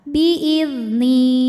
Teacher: sebab ada Ya Sukun didahului harakat kasrah maka Nun panjang dua harakat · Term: Mad thobii